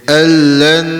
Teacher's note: Gabung tanpa dengung. Jadi dia al-lan, dekat lan baru dengung.